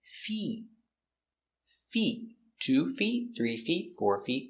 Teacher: not the short I not fit but the long e feet